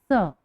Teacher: इसको बोलते समय हमारे दांतों से हवा बाहर होकर ध्वनि आ रही है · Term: दंतव्य स